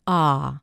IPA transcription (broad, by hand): ɑː